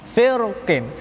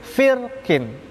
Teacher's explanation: Huruf qaf adalah huruf isti'la, huruf isti'lanya berharokat kasroh. Firqin bisa dibaca tebal, firqin bisa dibaca tafkhim. Kemudian juga bisa dibaca tarqiq, tipis, firqin.